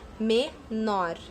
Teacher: Então, o nor é a última sílaba e ela é mais forte. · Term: sílaba tônica